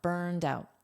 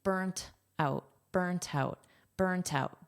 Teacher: I'm pronouncing this as a soft D because that's American English pronunciation. In British pronunciation is pronounced as a soft T.